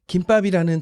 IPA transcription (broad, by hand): kimbɑp